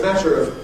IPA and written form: ˈmætər əv (matter of)